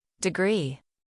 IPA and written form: dɪˈɡriː (Degree)